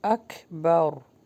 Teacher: وَلَعَذَابُ الْآخِرَةِ اکبر، اور یہاں پہ سٹاپ کریں گے تو اکبر، را کو ہیوی کر کے پڑھیں گے